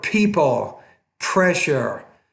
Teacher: That P sound you have to pronounce with more air.